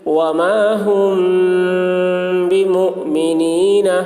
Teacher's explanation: میم ساکن کے بعد با آ رہا ہے اس لیے غنہ کے ساتھ اخفا ہوگا، اس کو اخفاء شفوی کہتے ہیں۔